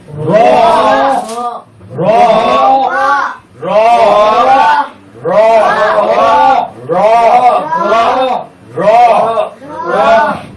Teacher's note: জিহ্বার আগার পিঠ তার বরাবর উপরে তালুর সঙ্গে লাগাইয়া র মোটা করে